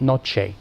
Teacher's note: In Spanish, that y and t work on each other, and you assimilate to get noche. That's where the ch comes from.